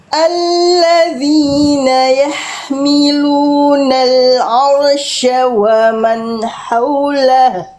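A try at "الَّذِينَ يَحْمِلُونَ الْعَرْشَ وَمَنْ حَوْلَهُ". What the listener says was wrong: Oke, roh sukunnya, Bunda perhatikan baik-baik. Roh sukun itu memang dia tidak boleh bergetar terlalu banyak. Arsya. Tapi karena roh sukun tadi Bunda melafalkan tidak terlalu berlebihan getarannya. Tapi jadi nggak jelas, harus tetap jelas. Walaupun dia getarannya nggak boleh banyak, tapi getarannya tetap harus jelas.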